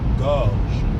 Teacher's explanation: Pay attention to the sounds at the end of the word gorge. We have that French R followed by the je sound from je